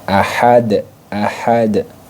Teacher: cara membacanya ahadunnya ya ahadun Awalnya ahadun dia menjadi Ahad nah dalnya ini di pantulkan diqolqolahkan ya dipantulkan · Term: Qalqalah kubra